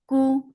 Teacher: for damma, circle your lips, the sound is short and light